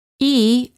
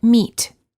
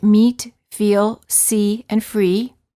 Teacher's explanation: [Music] e as in meat the lips are slightly smiling tense and not rounded and the tongue is tense it is high and far forward near the roof of the mouth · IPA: /i/